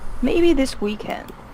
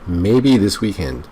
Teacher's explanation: a rising intonation in English it's used to show uncertainty